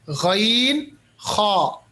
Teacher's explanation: غین اور خا کو تھوڑا خراش کے ساتھ اور موٹے انداز میں اور ہونٹوں کو گول کر کے پڑھنا ہے